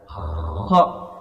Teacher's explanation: Jadi ada dari ujung tenggorokan dan dia termasuk huruf ini, kedua huruf ini ghain dan kha termasuk huruf yang tebal atau tafkhim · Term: huruf kha